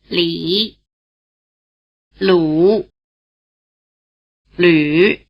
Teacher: have your tongue bunched forward as if for E, and your lips rounded as if for U